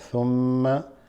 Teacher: mim shadda, so you hold that